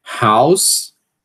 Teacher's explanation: como se o A fosse uma vogal central, como se o A não, como o A sendo uma vogal central. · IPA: haus